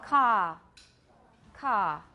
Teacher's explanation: Car has no schwa diphthong, does not become a diphthong, let's put it that way. The vowel does not become a diphthong, there is no schwa. It is simply ka, it's a very long A sound.